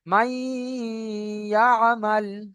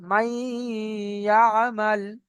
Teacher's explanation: এই মাই বলে নাকের ভিতর আওয়াজটাকে একালি পরিমাণ ধরে রাখা, গুণনা করা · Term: ইদগামে নাকিস